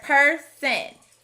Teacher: This word has another schwa instead of hearing person with a short o